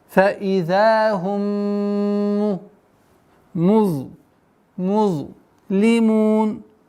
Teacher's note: فإذا هم долгота в размере двух огласовок фатха. Фаидахум, полноценная назализация в размере двух огласовок с удержанием.